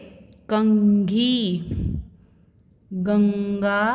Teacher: इन सबको बोलते समय ध्वनि हमारी नाक से निकलती है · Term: अनुस्वार